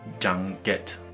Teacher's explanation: The dative case is marked by a nasal that is articulated at the same place as the following consonant.